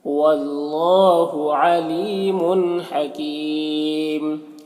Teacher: تنوین کے بعد ہا ہے حروف حلقے میں سے تو تنوین میں اظہار حقیقی ہوگا، اسے جلد پڑھنا ہے۔ یہاں پر وقف کی صورت میں مد عارض وقفی ہوگا تو اس طرح سے پڑھیں گے، واللہ علیم حکیم۔ · واللہ، یہاں پر اللہ کلام سے پہلے واو کے اوپر زبر ہے تو اللہ کلام کو پر پڑھیں گے، کھڑا زبر ہے، ایک الف کے برابر کھینچیں گے۔